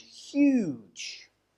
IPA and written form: hjuːdʒ (huge)